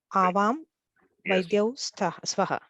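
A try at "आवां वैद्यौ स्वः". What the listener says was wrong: Avam Vaidya Swaha, yes.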